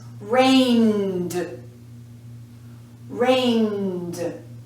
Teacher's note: Get the vibration here, so it's here too. The spelling, of course, is still ed, but the sound is d.